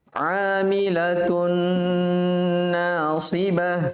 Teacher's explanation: Tun di situ tanwin yaitu dhammatain itu sudah hilang. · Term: nakis